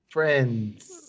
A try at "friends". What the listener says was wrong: Friends, no D. You have to say friends.